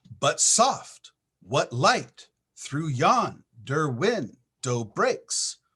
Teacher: perfect iambic pentameter that's five steps